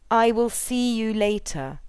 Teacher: See and later would probably be accented in this word group with the nucleus on later. If we don't contract, we reduce the energy available for see by expending too much effort uttering I and will separately.